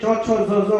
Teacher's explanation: તમારે ચ છ જ જ બોલવું હોય તો જીભને તાળી અડાડવી જ પડે, એને તાલુ કહેવાય